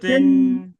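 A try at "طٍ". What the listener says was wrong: এটা হামস হবে না, এটা জেহের করে, কলকলা করে, মোটা করে, হ্যাঁ, মুখের ভিতরে আওয়াজ করে তারপর পড়তে হবে।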